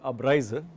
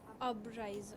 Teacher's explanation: It is not abreise, but it is Abreise. Ab has to be stressed.